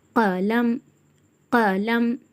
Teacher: உருஃபே முஸ்தாலியா வல்லினமான எழுத்து தடிமனாக ஓதணும்